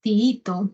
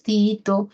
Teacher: Otra fórmula de hiato simple es la de vocales cerradas iguales, o sea, repetidas.